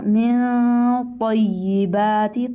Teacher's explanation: من پہ اخفا ہوگا، من طیبات، طا کو موٹا کیجئے